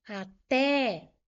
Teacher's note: Porque ela é uma oxítona. Até, o té é a sílaba forte. A última sílaba é a sílaba tônica. É uma palavra oxítona que terminou em E.